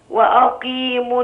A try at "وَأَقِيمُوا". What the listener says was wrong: دايما الهمزة ترقق، ما أقولش وا، أقول وأقيموا